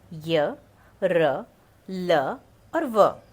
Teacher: अंतस्थ व्यंजन स्वर और व्यंजन के बीच उच्चारित किए जाते हैं। उच्चारण के समय जिह्वा मुख के किसी भाग को पूरी तरह स्पर्श नहीं करती।